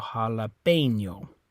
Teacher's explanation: Okay, same rule on this one, ends with an O and ends with a vowel, so the stress is on the second to last syllable, or second to last vowel, which is that E, which remember in Spanish you say A, so jalapeno.